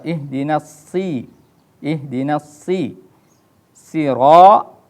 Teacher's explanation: ini shad ini huruf isti'la. Jadi harus dibaca tebal.